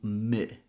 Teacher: E is a tense sound. And here we want a more relaxed sound. So the tongue is a little bit lower, so not E, but I. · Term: I sound